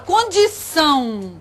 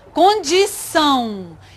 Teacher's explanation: Se chama ditongo nasal, porque é como se tivesse o A e o U.